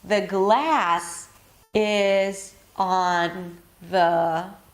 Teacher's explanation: I keep going down because these are not stressed words.